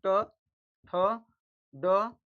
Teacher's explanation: ट, थ, ड, ढ, और मूर्धन न का इन सभी का उच्चारण स्थान हो जाएंगे मूर्ध